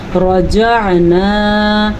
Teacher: را کو ہم نے پر پڑھا ہے کیونکہ را کے اوپر زبر ہے، اگر را کے اوپر زبر یا را کے اوپر پیش ہو تو را پر پڑھی جاتی ہے، اگر را کے نیچے زیر ہو تو را باریک پڑھی جاتی ہے۔